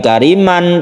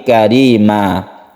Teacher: Yaitu tanwin atau fathatain, tanwin fathah diganti menjadi mad. Karena sudah diganti maka berubah menjadi fathah biasa, bukan kariman tapi karima. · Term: mad iwad